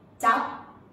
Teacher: So your mouth still closes like there's a P, okay?